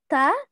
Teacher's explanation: Huruf ta, lidah kita kemana? Bertemu dengan pangkal gigi depan